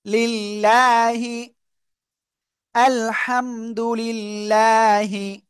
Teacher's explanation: আল্লাহ শব্দের লামের ডাইনে জের চিকুন করে পড়তে হবে